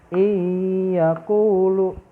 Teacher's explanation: maka suara nun sukun melebur ke huruf ya jadi enam suku ini suaranya hilang dan langsung masuk ke huruf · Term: idgham